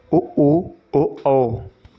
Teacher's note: ओठों की स्थिति के आधार पर स्वरों के दो भेद होते हैं जिनके उच्चारण में होंठ गोल यानी वृत्त के समान हो जाते हैं, उन्हें वृत्तमुखी स्वर कहते हैं।